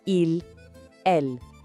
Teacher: O s final dos dois é completamente mudo, ou seja, na fala il no singular e ils no plural são exatamente iguais.